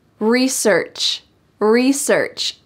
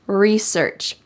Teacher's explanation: notice that this is the american english pronunciation we emphasize re and don't emphasize search